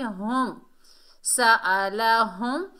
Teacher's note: ہا کو میم سے ملائیں گے، ہا کو بھاری ساؤنڈ سے ادا کریں گے